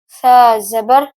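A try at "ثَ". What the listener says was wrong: सीटी की आवाज नहीं आनी चाहिए, नरमी लाएं।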